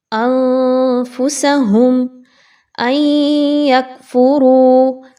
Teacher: اگر اس کے بعد فا آ جاتی ہے تو فا کا حرف جو ہے وہ حروف اخفا میں سے ہے، آپ نے یہاں پہ نون کی آواز کو کلیئر نہیں پڑھنا، مخفی کرنا ہے